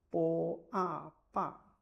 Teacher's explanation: combine the consonant bo with the vowel a. It is the first tone, and you will get bo a ba.